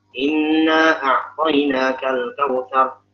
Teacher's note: gunnahnya kurang, matnya kurang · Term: khafi